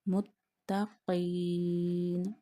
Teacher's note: Again you have to put a stress on ta and touch your tongue to the roots of your upper front teeth while reading ta